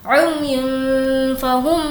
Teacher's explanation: اب ہمیں یہاں پر تنوین کی آواز کو ناک میں چھپانا ہے. وہ اس لیے کہ تنوین کے بعد جو فا ہے وہ حرف اخفا میں سے ہے.